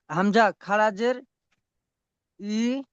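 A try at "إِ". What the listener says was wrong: ই টান বেশি দেন, টান কম হয়ে গিয়েছে।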